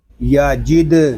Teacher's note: یا زبر یا، جیم دال زیر جد، یا جد، دال ساکن ہے، اس میں خوب کلکلا ظاہر ہوگا